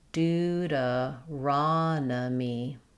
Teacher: In Deuteronomy, we stress on the raw syllable. Letters O say the A sound here.